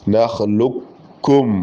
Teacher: കാഫിനെ നമ്മൾക്ക് പൂർണമായിട്ട് കാഫിലേക്ക് അങ്ങ് ലയിപ്പിക്കാം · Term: ഇരട്ടിപ്പിക്കാം